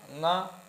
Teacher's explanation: जो ङ है यह मुख के साथ साथ किससे बोला जा रहा है? नासिका से। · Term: अनुनासिक